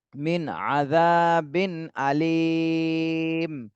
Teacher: নুন সাকিনের পরে ইজহারের হরফ, এজন্য স্পষ্ট করে পড়তে হবে এখানে। মিন আযাবিন আলিম, লাস্টে তিন আলিফ টান দিতে হবে আর মিমে জজম দিয়ে পড়তে হবে।